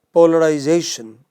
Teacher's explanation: fourth syllable from the beginning second from the end